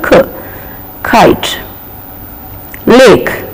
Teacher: K is aspirated, as I told you, K. Kite, lake, K in the final, park, K in the final, R is silent, pack.